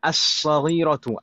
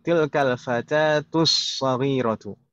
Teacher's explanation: Meskipun ditulis tanpa tasydid sekalipun, itu tetap bacanya seperti itu karena ini al-syamsiyah. Jadi masuk idgham langsung ke huruf shad. Lamnya idgham ke huruf shad al-syamsiyah.